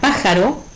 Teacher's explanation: en la palabra pájaro, que es una palabra de 3 sílabas, ¿sí?, la sílaba tónica es pa. Al ser la antepenúltima y como es una palabra esdrújula, le ponemos la tilde gráfica.